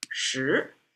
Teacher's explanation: shí is a rising tone